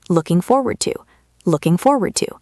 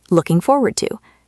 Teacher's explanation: connecting the words looking and forward and to? It sounds like one long word.